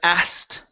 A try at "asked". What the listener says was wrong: Here you said hast. Instead of hast, it's asked.